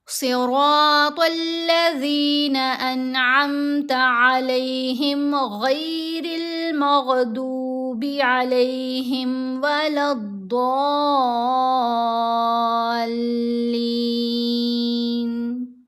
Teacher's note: صاد کو موٹا پڑھیں گے اور را کو موٹا پڑھیں گے، طا کو موٹا پڑھیں گے۔ تینوں حروف جو ہیں یہ حروف مستعلیہ میں ہیں، ان کی آوازوں کو پر پڑھا جائے گا، موٹا پڑھا جائے گا۔